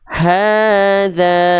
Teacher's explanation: secara keadaan dasarnya dia mesti dibaca 2 kali ayun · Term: mad tabi'i